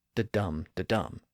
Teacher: in each case we have the the five heartbeat rhythm where each beat begins with an unstressed syllable and ends with a stressed syllable